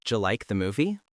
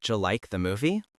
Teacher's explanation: Think about the J sound. It represents D plus Y.